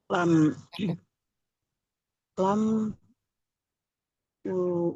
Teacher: antara tepi lidah secara bersamaan bertemu dengan gusi atas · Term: huruf lam